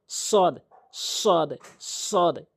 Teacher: জিহ্বার আগা উপরে নিচে দুই দাঁতের পেট